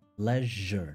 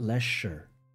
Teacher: s is j leisure not lasher right and that is simply a change of the sh sound becoming je when it appears between two vowels